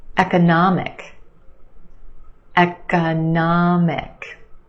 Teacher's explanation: syllable is your stressed syllable nah the ah sound economic and we have a schwa in the second syllable · we've got four syllables the third syllable is your stressed syllable